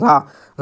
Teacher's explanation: நாவின் நுனி மேல் அன்னத்தின் முதல் பகுதியை தொட்டு வருவதால் ரகரம் தோன்றுகிறது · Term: இடையின ரகரம்